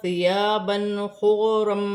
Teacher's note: 2 زبر کی تنوین میں غنہ نہیں ہوگا کیونکہ آگے حرف حلقی میں سے خا آ رہی ہے